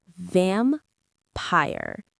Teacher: The stress is on the first syllable, vam.